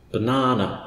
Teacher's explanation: If you take the word banana, my favourite word, it's emphasised in the middle. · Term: emphasis or stress